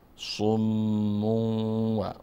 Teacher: والذين كذبوا بآياتنا صم و میم مشدد هست و همچنین تنوین داره. بعد از تنوین حرف واو آمد، پس اینجا حرف واو ادغام میکنیم